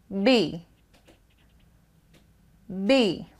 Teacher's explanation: Touch your throat, and while you say B, B, you will hear a vibration here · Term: voice sound